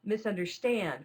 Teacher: misunderstand, with stand being the stress syllable.